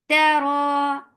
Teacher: Ta is very shidda letter. There is no flow of sound